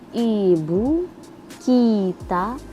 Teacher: vokal I tinggi atas depan